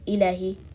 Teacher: not lengthening the alif after the lam, saying ilahi, stretching the kasra sound under the hamza, ilahin nas.